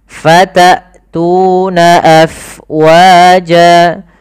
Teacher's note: jelaskan suara hamzahnya karena dia punya sifat yang mencolok, yaitu jahar dan syiddah.